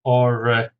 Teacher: Origami, 4 syllables, stresses on the third